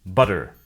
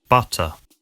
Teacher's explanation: In the US, they sometimes sound like a d, an alveolar tap instead of t, an alveolar stop.